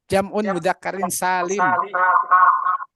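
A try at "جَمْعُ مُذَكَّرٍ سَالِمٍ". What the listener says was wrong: jam'u jangan jam'un, jam'u mudzakkarin salimun.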